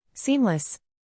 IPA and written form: ˈsiːm.ləs (Seamless)